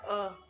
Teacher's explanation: agak rendah depan tak bulat